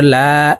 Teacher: এই লাম আলিফের সাথে এক আলিফ টান হবে কারণ জবরের বাম পাশে খালি আলিফ থাকলে ওই হরফকে এক আলিফটা